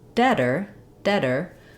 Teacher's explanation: in debtor, I use what's called a flap T. There's no burst of air because in debtor, the stress falls on the first syllable